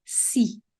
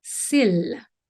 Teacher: En français, les voyelles peuvent être tendues, comme le I dans si, ou relâchées, comme dans s'il.